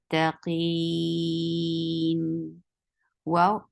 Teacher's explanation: the makhraj of wow is circling your lips. Fatha, open your jaws.